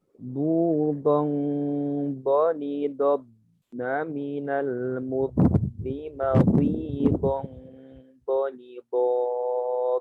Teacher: Nah, tentunya dipastikan ya Ustaz ya, ada angin di sisi atau di pipinya. Ada angin di pipinya. Dipastikan bahwa keluar dari sisi lidah.